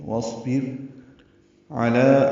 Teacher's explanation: واصبر میں واو کو صاد سے ملانا ہے، صاد ساکن ہے، اس پہ ہمس ہوگا، را باریک ہے. واصبر علی عین وسط حلق سے ادا کریں گے، لام کو 2 حرکات لمبا کرنا ہے.